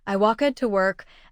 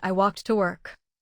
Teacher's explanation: The first has an extra syllable. The second ends with a quick T sound.